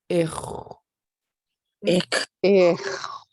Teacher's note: Ich. Yep, it's nice and loose and kind of gravelly. You're just sort of gargling the moisture in the back when you do that underline X.